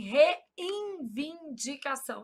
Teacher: A gente nasaliza esse N na pronúncia.